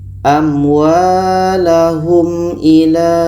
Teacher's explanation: ini izhar syafawi, tidak boleh dengung, harus dibaca jelas. Mim jelas, a jelas.